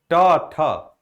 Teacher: कार्य वर्त ध्वनियों के उच्चारण में जिह्वा की नोक दंत पंक्तियों के ऊपरी भाग का स्पर्श करती हैं